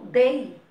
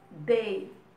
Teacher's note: Do e o i é só um apoiozinho. Então, a vogal é o e o i é a semivogal. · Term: ditongo